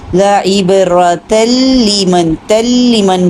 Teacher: تل لمن پڑھ رہے ہیں، تا کو لام سے ملایا ہے ہم نے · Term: ادغام